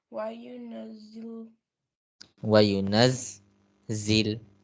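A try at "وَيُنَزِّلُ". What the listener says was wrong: Why you naz zil? I told you that we stop at shadda for a while, right? So if you will follow the rule, it will help you always in Quran recitation. We stop at shadda little.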